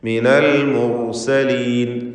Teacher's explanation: ഹുക്മൻ വജഅലനി മിനൽ മുർസലീൻ, റാഇനെ തഫ്ഖീം ചെയ്യുക. മുർസലീൻ തടിപ്പിച്ച് പറയണം റാഇനെ